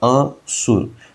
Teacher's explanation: तो असुर यानी कि अ पर जोर नहीं देंगे। असुर यहां पर अ पर जोर नहीं दे रहे हैं हम लोग।